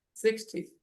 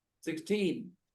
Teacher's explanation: When we say 60, the stress is on the first part, not on the second.